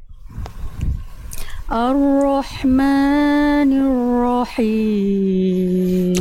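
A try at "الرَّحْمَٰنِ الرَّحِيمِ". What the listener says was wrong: Tinggal jangan terbuai dengan nada maknya kepanjangan. Ya, boleh pakai nada bagus. Bagus diindahkan dengan nada, tapi jangan sampai kepanjangan. Ar-Rahmanir-Rahim. Tinggal seperti biasa ya huruf ro.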